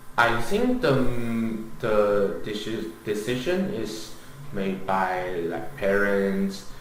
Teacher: at the end of the sentence he uses this rising intonation